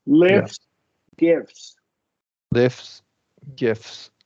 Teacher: you almost don't even need to articulate the te